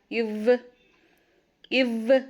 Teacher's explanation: அந்த கீழ் உதடும் உங்களோட மேல் பல்லும் ஒட்டும்